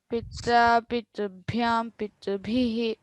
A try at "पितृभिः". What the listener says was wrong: तत्र पितृभिः इति तत्र डोंट स्ट्रेस पितृभिः दट्स इट